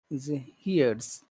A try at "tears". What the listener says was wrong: Just go down, don't go up at all.